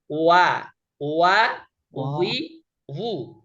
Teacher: দুই ঠোঁট গোল করে মুখের খালি জায়গা থেকে উচ্চারিত হয় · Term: ওয়াওয়ের মাখরাজটা